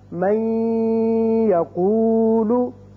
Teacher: ہم اس کو جب من کو یقولو کے ساتھ ملائیں گے تو ادغام کریں گے اور یہاں ایک الف کے برابر آواز ناک کے بانسے میں ٹھہرے گی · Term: غنہ